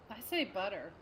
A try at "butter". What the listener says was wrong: You said it with D's, yeah.